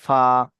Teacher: নিচের ঠোঁটের ভিজে অংশ এবং সামনে উপরে দুই দাঁতের সাথে লাগিয়ে উচ্চারিত হয় ফা